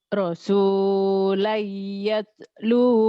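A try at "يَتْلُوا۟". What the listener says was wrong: Yatsnya hams pecah. Yatslu. Rasulullah yatslu. rasulan yatlu alaikum.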